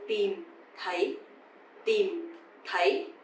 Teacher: A bit softer, right? So tìm is dấu huyền, you have to go down, and thấy, dấu sắc, you have to go up. So tìm thấy.